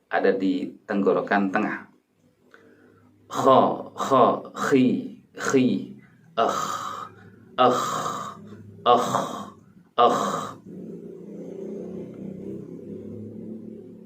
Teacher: Ditemukan bahwa kha terletak di bagian atas tenggorokan ( adnal halqi).